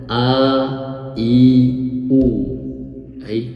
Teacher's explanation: kalau hamzah diucapkan dalam kondisi hidup harokatnya fathah kasroh dhamma, maka pita suara kita itu terbuka, bergetar.